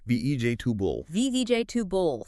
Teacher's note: Those middle sounds, those vowels, they reduce a lot. It becomes more like VJ tubul.